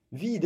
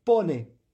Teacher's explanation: C'est-à-dire que si je le prononçais, on ne le prononce pas d'ordinaire en français, on a du mal à distinguer les longues et les brèves, mais si je voulais rigoureusement le prononcer, je dirais vide. Vous voyez, j'allonge le e parce qu'il est important. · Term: le e est long